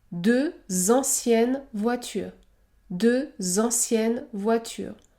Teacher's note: le X se prononce Z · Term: liaison